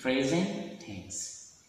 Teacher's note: Present is being ended by T, and the word tense started by T. So we pronounce only one T, that is silent letter. We find silent letter T, present tense, not present tense.